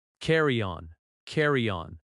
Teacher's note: The stress is on the first word.